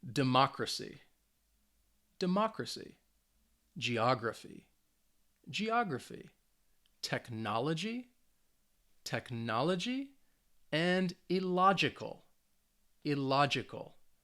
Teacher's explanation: the stress is on the third to last syllable which means for these words it's on the second syllable